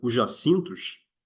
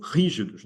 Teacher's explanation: tem em si uma sílaba tônica de uma vogal altíssima que é o i